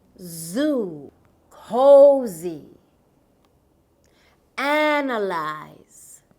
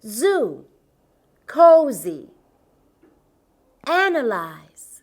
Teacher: This consonant is voiced. It means that there's a vibration on your vocal cords here. This sound is like the buzz of a bee.